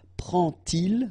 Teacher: And so this little d here is in red just to show you that you won't pronounce it like d to make the liaison, but you will pronounce it like t. And so you will get prend-il, okay?